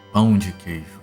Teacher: you guys cannot say pão because you don't have that nasal A phoneme trained into you